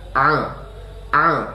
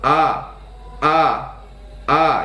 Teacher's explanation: huruf Ain berada di tengah tenggorokan sedangkan huruf Hamzah berada di pangkal tenggorokan Jadi huruf a tu di sini di tengah tenggorokan ya teman-teman